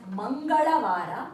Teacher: So Tuesday we write as Mangalavara, and remember the la pronunciation, it has to touch upper palate of your mouth, and the colloquial version is Mangalvara.